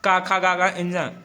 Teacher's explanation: ये पूरा क ख ग ये कंठ से उच्चारित होगा